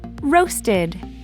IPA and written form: ˈroʊstəd (Roasted)